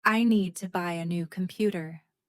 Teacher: Native speakers stress need. Buy, new, computer. The rest is softer. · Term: sentence stress